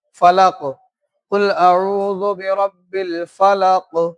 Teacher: काफ की आवाज मखरज में जुम्बिश पैदा कर रही है और उसकी आवाज क्या हो रही है, लौटती हुई निकल रही है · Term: कलकला